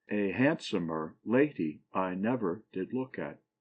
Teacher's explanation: a foot that has the first and third syllables un accented and the middle one accented